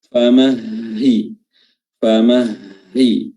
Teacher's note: Famahi, huruf ha di sini perhatikan dengan baik, huruf ha yang makhrajnya ada di tenggorokan bagian bawah aqsal halq itu merupakan huruf yang paling ringan. Yang paling ringan sifat-sifatnya, maka harus diperhatikan dengan baik, jangan sampai ha-nya tidak terdengar dengan baik karena lemahnya huruf tersebut.